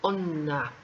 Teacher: no sale por la boca on na y para lograr eso hay que alargar on y no decir ona